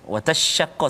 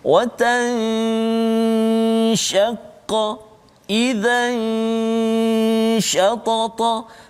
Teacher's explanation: sebut huruf shin dah tunggu, cuma ada dengung dulu ikhfa tu, jangan terus pergi shin jadi idgham pula